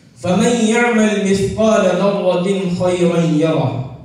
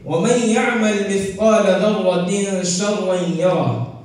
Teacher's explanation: یہاں تنوین کے بعد شین ہونے کی وجہ سے ایک الف کے بقدر غنہ ہوتا ہے